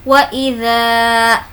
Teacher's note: ज़ा को खींचेंगे क्योंकि अलिफ मद्दा है